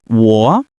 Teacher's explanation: It's a third tone which dips down and then rises.